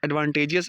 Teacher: Advantageous has a primary stress on first and secondary stress on third syllable